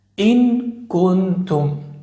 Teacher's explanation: فإن الإخفاء، فإن إخفاء النون الساكنة أو التنوين مع الكاف والقاف يكون أقرب للإظهار. مع الكاف تكون الغنة مرققة قريبة للإظهار.